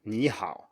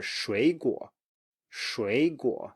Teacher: when we have 2 third tones, and then the first one rises.